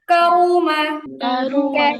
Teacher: মানে হচ্ছে মোটা বলবেন রু রটা রু র এর যে উচ্চারণ র উচ্চারণ মূলত হচ্ছে একটু মোটা টাইপের রু